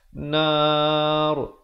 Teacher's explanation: ronya dibaca dengan wajah yang tebal